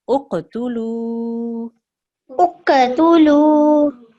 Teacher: this is qaf is qalqala, so you have to make a slight jerk there